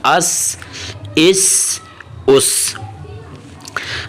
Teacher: تو سین کی ادائیگی ہم نے پہلے پڑھا تھا، پہلے لیسن نمبر 1 میں سین، تو وہاں پریکٹس ہم نے کیا کی تھی، سین کی سین ایسے سین کی سیٹی کی آواز بنا کر نکالنی ہے. سین اوپر والے اور اوپر والے نیچے دانتوں کو ہلکا سا کلوز کر کے زبان تھوڑی سی آپ کی دونوں دانتوں کے پیچھے ہو، سین، اور وہاں سے سیٹی کی طرح آواز نکالیں.